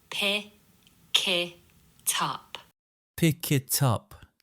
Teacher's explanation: Notice the way the final consonants detach from the words and attach themselves to the following vowel sound. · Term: linking